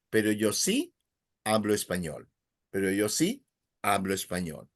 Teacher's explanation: So you linked it. Hablan español, pero yo sí, little pause, hablo, and you link it again.